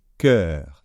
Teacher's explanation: donc c'est un e bien ouvert